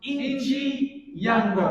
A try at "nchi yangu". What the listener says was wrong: There is no I. Nchi yangu. Yeah. No. NCHI.